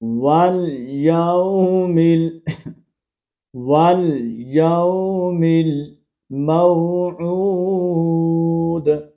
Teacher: واو کو لام کے ساتھ کنیکٹ کریں گے